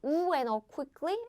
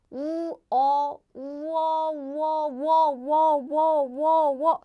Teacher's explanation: So John is wo, and 자전 is simple, is u sound plus o sound, and it becomes wo